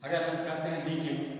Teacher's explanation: पहला ये जो ल है, ये इसको बोलते हैं क्लियर ल, क्लियर ल, और दूसरे को बोलते हैं डार्क ल